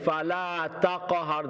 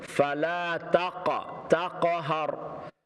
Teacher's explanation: The qaf is a full mouth letter, heavy sound.